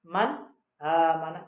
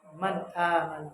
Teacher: Jadi nun mati bertemu alif. Maka jelas bacaannya man amana. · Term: izhar